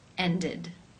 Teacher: the e d is pronounced with the e as in sit and the D sound